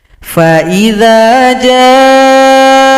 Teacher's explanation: Panjangkan shad 6 ketukan atau 6 harokat, tasydidkan ke huruf kha. Mad lazim mutsaqqal kalimi.